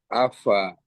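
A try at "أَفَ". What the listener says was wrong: Nah, alirkan, jangan buru-buru, alirkan udaranya dulu. Afa. Ya, hati-hati ini jangan sampai tanpa iringan napasnya.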